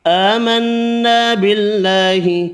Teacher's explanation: نون مشدد پر غنہ کرنا ہے